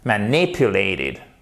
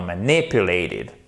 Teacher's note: vous avez votre accent tonique sur la deuxième syllabe.